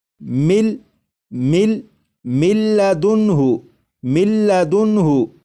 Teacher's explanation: جب ادغام کریں گے تو غنہ بھی نہیں کریں گے